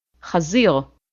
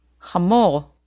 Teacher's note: It sounds similar to J in Spanish, like in the name Jose. Chet is pronounced from the throat, like the sound made when you're clearing your throat.